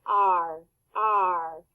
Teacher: put your fingers on your throat does it vibrate r r yes it does so it's voiced